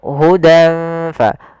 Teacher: perdengarkan nunnya lebih kesamarkan ke ng sedikit. Tapi dia langsung kepada makhrajnya. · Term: ikhfa